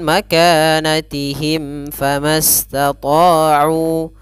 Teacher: Kemudian pada lafal mim mati bertemu fa, maka di sini ada kita namakan dengan izhar syafawi. Maka cara membacanya harus jelas, ya, mimnya tidak boleh ditahan.